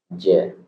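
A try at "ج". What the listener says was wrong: Nah, ingat huruf jim itu nggak boleh mendesis. Ja, bersih. Ja.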